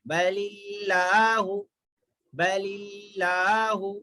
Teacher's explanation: لفظ اللہ کے لام سے پہلے زیر ہے تو لفظ اللہ کے لام کو باریک پڑھیں گے